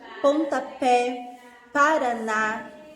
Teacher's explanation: as palavras oxítonas elas são as palavras em que as sílabas tônicas está na última sílaba